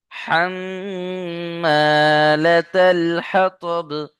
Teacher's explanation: মিমের উপরে তাসদীদ ওয়াজিব গুন্না